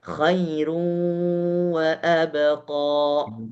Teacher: Padahal pada dasarnya waw tidak punya dengung. Tapi karena ada si sifat nun yang tersisa sehingga ada dengung ketika membaca